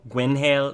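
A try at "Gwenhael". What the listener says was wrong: know the H is silent cuz it's friends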